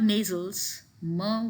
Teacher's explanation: then you have nasals myrrh which is bilabial